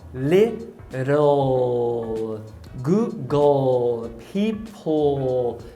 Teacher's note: Só que em inglês o L, ele é velar, ou seja, você precisa subir a língua.